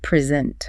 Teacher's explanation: The pitch goes up on the second syllable. You can hear it lift.